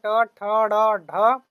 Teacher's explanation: इसका उच्चारण जो है जीभ को पीछे मोड़ के किया जाता है। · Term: मूर्धन्य